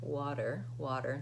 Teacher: you think about it as being kind of a D sound, water, water, nice and light